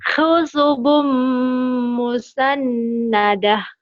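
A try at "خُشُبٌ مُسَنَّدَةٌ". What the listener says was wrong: Shinnya gede. Khusyubum. Khusyubum musannadah.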